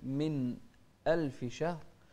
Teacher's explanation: لازم نبين الهمزة بعد النون الساكنة كذلك الهاء في شهر نوضح الهاء هنا شهر شهر ما تسرع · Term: الإظهار